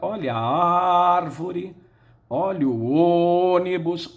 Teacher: cuja sílaba tônica é a antepenúltima é o caso de árvore ônibus